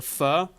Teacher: so you just switch any th sound to an f sound